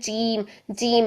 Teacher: جے کی ساؤنڈ آنی چاہیے، اس میں چے کی ساؤنڈ نہیں آنی چاہیے